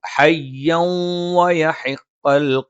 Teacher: ഹയ്യവ തെൻവീന് ശേഷം വാ വന്നു, ഇദ്ഗാമും ബിഗുന്നയാണ്. തെൻവീനിനെ ശേഷമുള്ള വാവിലേക്ക് ചേർക്കും, എന്നിട്ട് മണിച്ചുച്ചരിക്കും.